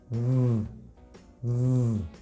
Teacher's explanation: la B corta, que es igual que la F, pero con voz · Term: voiced